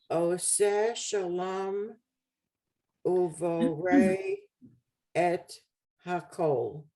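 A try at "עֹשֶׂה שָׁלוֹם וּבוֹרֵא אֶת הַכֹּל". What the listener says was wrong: Right. Good.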